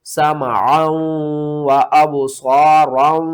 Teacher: عین کو واو کے ساتھ ملانا ہے، واو کو 2 بار پڑھنا ہے اور واو کے اوپر غنہ کریں گے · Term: ادغام مع الغنہ